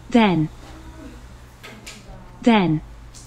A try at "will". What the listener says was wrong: Will. Well이라고 발 들리는데 will. Will. Will.